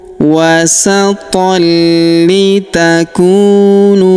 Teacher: huruf ku kita panjangkan 2 harokat karena waw sukun di depannya